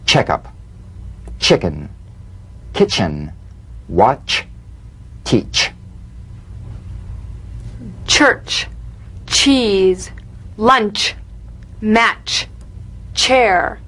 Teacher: let's put it together into one sound a crisp staccato treatment feel a sharp crisp percussive sensation between the tip of the tongue and the gum Ridge